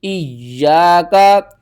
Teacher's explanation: یوم الدین، ایاک نعبد و ایاک نستعین، ایاکا حمزہ یا زیر یا الف زبر یا ایا کاف زبر کا ایاکا یا کے اوپر تشدید ہے یا کو آپ نے 2 بار پڑھنا ہے